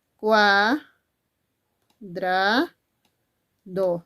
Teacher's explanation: aquí en cua dos vocales en una misma sílaba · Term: diptongo